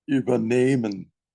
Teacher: It's not a separable verb. This is why you emphasize the second part. If it was the way you pronounce it, it would be separable.